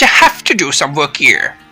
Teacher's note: Notice how I pause for just a moment between the two sentences, and notice how my pitch, the musical note of my voice, goes up on stressed content words and goes down at the end of each sentence.